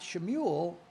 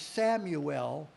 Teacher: Judah used the sheen, the SH, and the house of Israel used the samek, the S.